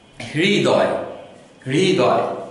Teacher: আমরা হ এবং র এর অর্ধেক অর্ধেক উচ্চারণ সংমিশ্রণ করে আমাদের উচ্চারণটি করতে হবে